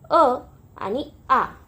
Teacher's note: यांचा उच्चार गळ्यामधून होतो जिभेच्या मागच्या भागातून म्हणजे गळ्यामधून होतो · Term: कंठवर्ण